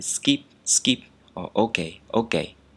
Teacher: both sounds like skip or okay in english but no aspiration